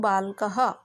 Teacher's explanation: तो जो विसर्ग लगाते हैं हम उसका उच्चारण करते समय हमारे मुंह से आवाज़ ह की निकलती है, लेकिन हम वहाँ पर ह नहीं लिखते हैं, वहाँ पर हमारा संस्कृत में विसर्ग लिखा होता है।